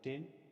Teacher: This type of consonant sounds resulting back a blocking or stopping effect on the air stream is called a stop or plosive. A full description of the ta at the beginning of a word like tin is a voiceless alveolar stop.